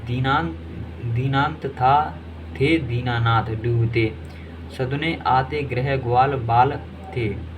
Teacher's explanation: ता थ द न की आवृत्ति हुई है। इनका उच्चारण स्थान दंत्य है।